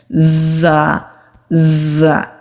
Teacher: हमारे सामने वाले दांत आपस में मिलते हैं हमारी जुबान की टिप नीचे वाले जो सामने के दो दांत हैं उनके मसूड़ों पर मजबूती के साथ लगाते हैं तो बजिंग साउंड आती है ज ज ये वाली आवाज मुलिया हरफ में से है मोटा · جب ہم زا کو ادا کرتے ہیں ہمارے سامنے والے دانت آپس میں ملتے ہیں، ہماری زبان کی ٹپ نیچے والے جو سامنے کے 2 دانت ہیں ان کے مسوڑوں پر مضبوطی کے ساتھ لگاتے ہیں تو بزنگ ساؤنڈ آتی ہے، زا زا، یہ والی آواز۔